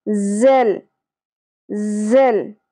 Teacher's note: ज शिद्दत से अदा होगा सीटी के साथ